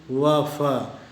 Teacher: इसके बाद है नंबर 9 दंतोष्ठ, लेबियोडेंटल। ऐसी ध्वनियाँ जिनका उच्चारण ऊपर के दांत और नीचे के होंठ की सहायता से होता है